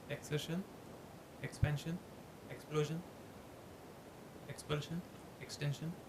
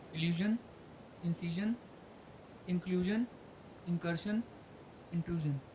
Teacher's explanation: In some it is clear shan, in some it is a little towards zan.